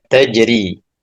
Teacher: Jadi ro itu akan dibaca tarkik tipis ketika rnya di kasroh. Jadi mentipiskan bacaan ro ketika kasrah. · Jadi rnya dibaca tarkik karena berharakat kasrah.